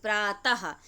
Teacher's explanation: हम लोग प्रातः बोलते हैं तो हा आ रहा है लास्ट में, यानी ऐसा लगता है कि हम हा ही बोल रहे हैं, लेकिन हा नहीं होता है और यह विसर्ग है।